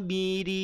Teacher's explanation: roknya tipis karena dia harokat kasrah